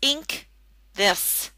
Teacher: And the N in ink has that NG sound.